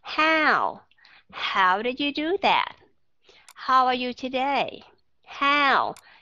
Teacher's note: cái âm a ở trong tiếng Anh đó nó là âm nó giống như là cái chữ cao ở trong tiếng Việt có nghĩa là chúng ta phải đọc rõ âm và hơi kéo dài một chút xíu